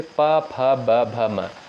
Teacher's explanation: प वर्ग के अंतर्गत जितने भी वर्ड आते हैं उनका उच्चारण स्थान होता है ओष्ठ।